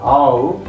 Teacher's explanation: the tongue is just gliding from A position to U position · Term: closing diphthongs